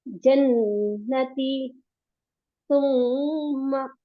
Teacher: जब नून पर और मीम पर तजदीद आए तो हम नाक में आवाज को थोड़ी देर रोककर गुन्ना करते हैं।